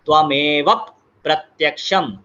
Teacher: अभी second line, त्वमेव प्रत्यक्षं तत्त्वमसि, यहाँ पर त्वमेव और प्रत्यक्षम, त्वमेव और प्रत्यक्षम जो है, यहाँ पर ध्रुतम का संधि लगेगा तो हो जाएगा त्वमेव प्रत्यक्षम, एक एडिशनल प का साउंड जो है वो उसको जोड़ना पड़ता है।